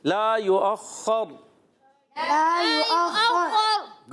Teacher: یؤخر یا پر پیش ہے حمزہ، واو کے اوپر جو حمزہ لکھا ہوا ہے یہ حمزہ پڑھیں گے، اور اس پر زبر ہے، اس کو خا سے ملائیں گے، خا کو ذرا رک کر ادا کریں گے. خا حرف مستعلیہ میں سے موٹا ہے.